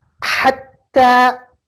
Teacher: Maka penekanannya itu besar. Penekanannya besar tapi tidak ada dengung di situ sama sekali. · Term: bertasydid